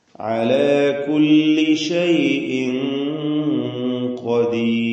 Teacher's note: അന്ത്യത്തിൽ വന്ന റാഇനെ തർക്കീഖ് ചെയ്യണം, നേർപ്പിച്ച് ഖദീർ എന്ന് ഉച്ചരിക്കണം